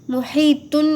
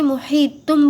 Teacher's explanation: محیطم، محیطم، پھر سے دیکھیے یہاں پر یہ جو تنوین، یعنی یہ دیکھیے دو پیش کی جو تنوین ہے، ہمیں جو ہے تو تنوین کی آواز ہم نہیں نکالیں گے، محیطن نہیں بولیں گے، محیطم بولیں گے، یعنی تنوین کی آواز کو میم کی آواز سے بدل کر پڑھنا ہے